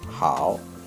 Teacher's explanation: the third tones, falling first, then rising. 您好, okay, 好, falling first, then rising.